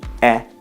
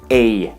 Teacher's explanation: Italian has two e sounds open e e like the e in bed and closed E A like the vowel sound in say